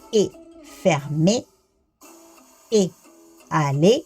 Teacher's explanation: seda hääldatakse siis E, ehk siis ta on selline E ja I vahepealne